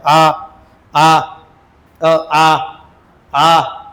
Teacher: आ कंठातून उच्चार होतो कंठे म्हणायचं त्याला